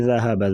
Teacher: ذال کو نرمی سے اور ہا گلے سے ادا کریں گے